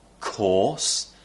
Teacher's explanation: the r is replaced with an or sound